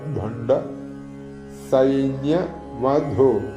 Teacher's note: ചൊല്ലുമ്പോൾ ശ്രദ്ധിക്കേണ്ടത് ഭ മഹാപ്രാണനാണ്. ഭണ്ഡ് ന പ്ലസ് ഡായാണ് അവിടെ.